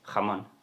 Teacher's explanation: Tienes que notar que el sonido viene realmente de la garganta por la vibración de las cuerdas vocales.